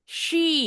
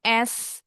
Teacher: She bibirnya mesti monyong. Beda dengan bunyi s. Bunyi s. S ini bunyinya S kayak ban kempes.